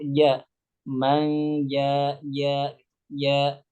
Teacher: huruf Jim itu pertama makhrajnya ada di tengah lidah mengenai langit-langit kemudian di antara sifatnya adalah jahr